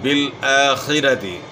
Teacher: بالآخرتی، یہاں جو ہے خاک جو ہے موٹے حروف میں سے، خا کو اپنے موٹا ادا کرنا ہے، را کے اوپر زبر، را کو اپنے موٹا پڑھنا ہے